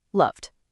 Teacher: If the sound before is voiceless, like the P in help, the ending sounds like a T, helped. But if the sound is voiced like the V in love, the ending sounds like a D